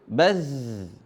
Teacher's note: Za, za, zi, zu. Nah, dalam keadaan sukun dialirin suaranya, bukan qalqalah